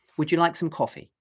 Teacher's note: And so I go down at the end.